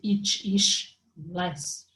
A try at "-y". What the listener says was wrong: Only the last one you said E and it's Y. But in a certain way, you are not wrong because we usually pronounce E, like, okay?